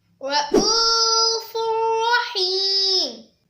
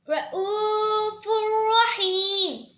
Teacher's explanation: اس میں تنوین کے بعد را آ رہا ہے، یعنی یہ را اور لام میں سے را ہے، اس میں غنہ نہیں کریں گے